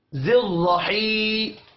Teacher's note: را کو موٹا پڑھیں گے زبر کی وجہ سے